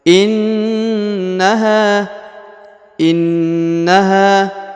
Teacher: Ditahan, ditekan 2 harokat ya. Ditekan, ditahan selama 2 harokat lalu didengungkan ya. Innaha. Kemudian huruf ha dipanjangkan 2 harokat ya, karena di depannya terdapat alif.